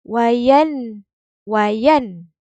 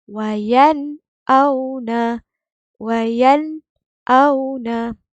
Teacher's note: Maksud jelas di sini nun sakinah ni bunyi dengan jelas. Hamzah ni pun bunyi dengan jelas. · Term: izhar halqi